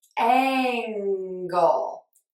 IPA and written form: ˈæŋ.ɡəl (Angle)